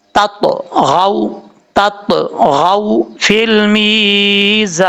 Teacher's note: حروف قلقلہ جب ساکن ہو تو تب ان میں قلقلہ ہوتا ہے, تو یہاں پر طا جو ہے وہ ساکن ہے تو اس لیے یہاں پہ قلقلہ بھی کریں گے